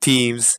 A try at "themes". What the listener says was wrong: I know you're pronouncing the th like just a T, but it's still themes.